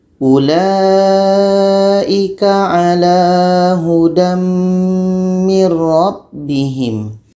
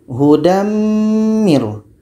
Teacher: Mim ini adalah huruf idgham bi gunnah. Jadi bunyi tanwin ini kita masukkan kepada mim.